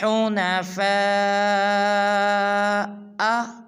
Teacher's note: فا کے اوپر مد ہے، اس کو 5 الف مقدار لمبا کریں گے